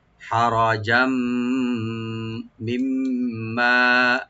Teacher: একটু আমরা ডিপ করে পড়বো। আর জিমের উপর যে তানবিন আছে, তানবিনের উপর যদি মিম আসছে, এখানে আমরা এদগাম উইথ গুন্না করব , এদগাম সহকারে সংযোগ করব মিমের সাথে, গুন্না সহকারে। হারাজাম মিম্মা,